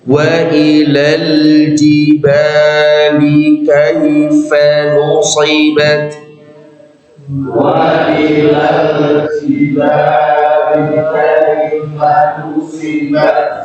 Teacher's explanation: ada kesalahan, nu tebal, harusnya tipis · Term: nu tipis